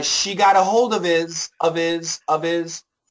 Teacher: in this situation we can cancel that H so it'll be easier